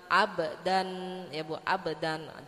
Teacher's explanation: namanya pantulan yang lemah karena dia qalqalah sughra, karena sukunnya asli, matinya asli ya Bu ya.